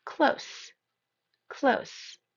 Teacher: The second pronunciation just has the end changing to an s sound. So close. Close, which means near.